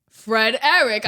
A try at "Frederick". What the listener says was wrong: you're saying it separately. Say Frederick.